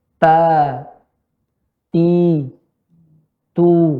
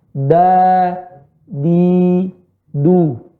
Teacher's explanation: Ujung lidah bertemu dengan pangkal gigi seri bagian atas.